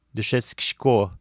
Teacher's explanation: в быстрой речи «и» безударное между глухими согласными может как бы проглатываться. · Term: оглушением гласных